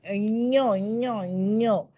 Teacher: तर तो त्याचा ज वर्ग असल्यामुळे अनुस्वाराचं उच्चारण ञ ञ ञ. यकार आहे तो, पण तो य नाहीये नुसता, तो नाकातनं पण आला पाहिजे.